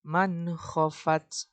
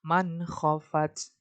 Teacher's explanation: Nah, dia tidak berdengung. Cara bacanya harus jelas.